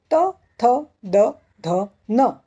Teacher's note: इसे कहते हैं दंत्य, क्योंकि जब इनका उच्चार करते हैं तो हमारी जिह्वा दांतों को स्पर्श करती है